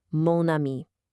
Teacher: Because spoken French hates those clunky vowel clashes, we just borrow the masculine mon simply to create an elegant smooth liaison